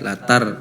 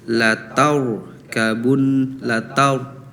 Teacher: Terus al-insyiqaq ayat 19 ini harusnya ro tafhim, lataur kabun lataur, jadi bukan latar ya, latar itu tipis, harusnya ro tafhim tebal